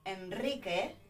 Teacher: we've got a strong R as well, because we've got consonante, consonant, and a vowel, una vocal, afterwards, right?